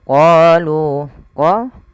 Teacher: qo panjangkan dua harakat. Mad thabi'i fatha bertemu alif lu sama mad thabi'i.